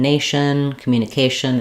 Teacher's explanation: anytime we have shun at the end of a word, like in nation, communication, etc., we stress on the syllable before the shun. So the A is the clear vowel that's stressed.